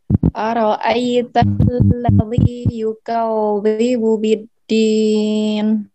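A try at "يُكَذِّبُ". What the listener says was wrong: Bukan yukau. Jangan seperti itu. Yukau. Tapi yukaz.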